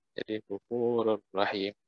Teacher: Ada juga wafurur rahim. Ro-nya itu langsung melebur ke huruf ro.